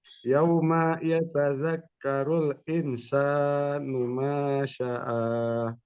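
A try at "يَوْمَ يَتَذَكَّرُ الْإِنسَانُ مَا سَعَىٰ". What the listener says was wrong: Masih agak sin ya, masih agak sin. Setengah sin dia. terpengaruh huruf sebelumnya rupanya.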